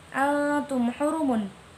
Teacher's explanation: Altum hurumun, hukum bacaannya idhar syafawi sebab mim sukun bertemu dengan ha, cara bacanya tidak dengung dan harus jelas